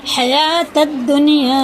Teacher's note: واو نہیں پڑھا جائے گا، الف نہیں پڑھا جائے گا، لام نہیں پڑھا جائے گا